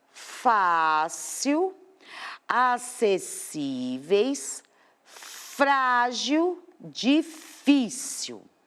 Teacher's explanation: O nosso segundo grupo são as paroxítonas, onde a penúltima sílaba é a mais forte.